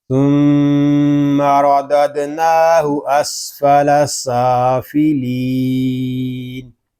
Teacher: وقف میں یہاں مد عارض ہوگا. مد عارض اس لیے ہو رہا ہے کہ یا مدہ کے بعد عارضی سکون آ گیا ہے، اور وقف بالاسکان ہوگا.